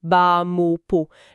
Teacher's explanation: Le S et le T à la fin, en général, c'est muet.